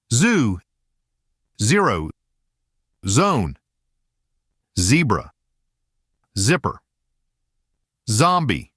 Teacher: From there, raise the jaw slightly so the front of the tongue narrows the gap between itself and the ridge behind the upper teeth. As air pushes through that narrow channel, it creates friction. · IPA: /z/